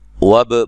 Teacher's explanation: با کو ہلا کے پڑھنا ہے، قلقلہ کرنا ہے یہاں